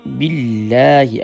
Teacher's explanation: اب دیکھیں اللہ کا نام مشدد ہے تو ہم اسے جماؤ کے ساتھ پڑھیں گے